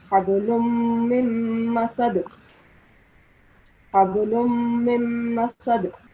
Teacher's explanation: Okay, over here we have mim mushaddad in succession twice. So whenever there's a mim mushaddad, we have to make a slight nasal sound and prolong it for 2 seconds